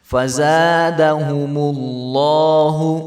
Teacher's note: تو کچھ لوگ جو ہے دال کو بھی لمبا کر دیتے ہیں، ساتھ دال کو لمبا نہیں کریں گے، دال کے اوپر زبر ہے تو اس کو بالکل بھی لمبا نہیں کرنا